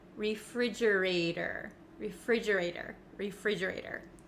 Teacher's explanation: Now, the ater, the T at the end of this word, it becomes a flap T in American English. That means it kind of sounds like a soft D sound